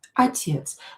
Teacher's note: When O is not stressed, we are going to pronounce it as A.